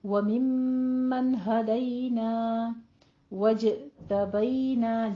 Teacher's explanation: وممن میں بھی میم کے اوپر غنہ واجبہ کریں گے، اور پھر نون کو آپ نے لمبا نہیں کرنا، نون کو جلدی پڑھنا ہے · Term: اظہار حلقی